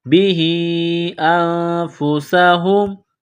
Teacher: سین میں سیٹی کی آواز پیدا کریں گے